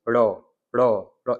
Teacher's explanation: आगे देखते हैं, अगला आएगा उच्छित व्यंजन, या फिर जिनको हम द्विगुण कहते हैं, ये होते हैं ड़ और ढ। तो जीभ पहले ऊपर उठकर तालु को झटके से छूती है